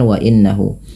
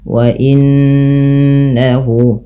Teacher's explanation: tahan bunyi suara nunnya sepanjang dua harakat karena ia bacaan gunah